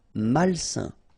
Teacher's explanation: A-I-N together, it's a nasal and it's un